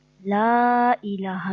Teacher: لا الف خالی اس سے پہلے زبر، الف مدہ، اس کو بھی ہم نے 1 الف کے برابر کھینچا. یہ حرف اگر آیت کے آخر میں آتے ہیں حرف مدہ تو حرف مدہ کو 1 الف سے زیادہ کھینچ کر پڑھتے ہیں، اور اگر آیت کے درمیان میں آتے ہیں تو اس کو 1 الف کے برابر کھینچ کے پڑھتے ہیں.